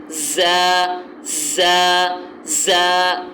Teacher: زا جو ہے وہ سیٹی والا حرف ہے اور اس میں بھرپور سیٹی نکلے گی. اس کو یہ حروف صفیر میں سے ہے.